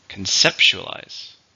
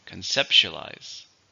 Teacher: 5, stress in the second syllable.